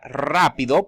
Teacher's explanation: la palabra rápido, por ejemplo, empieza con R, es una sola R, pero se pronuncian como si fueran dos R.